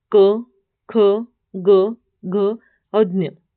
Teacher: कंठ यानी जिन वर्णों का उच्चारण कंठ से होता है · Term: कंठ वर्ग